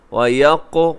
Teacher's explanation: قاف کلکلا بھی ہے، قاف موٹا بھی ہے